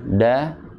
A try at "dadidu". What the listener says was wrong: Ya, itu masih ada hamasnya, masih ada. Da, di, ah benar tadi kan kasroh, seringnya ketika kasroh, kasroh, ya, iya, karena apa? Dia lidah tengahnya itu naik, Pak. Di, gitu. Jadi ada, iya, jadi kecenderungan keluar hamasnya ketika harokat-harokat tertentu.